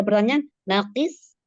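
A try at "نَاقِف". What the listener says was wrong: Nakif, kif pakai F, fa. Nakif. Nun fathah, qaf kasroh, fa sukun, nakifun, nakif. Iya, nakif.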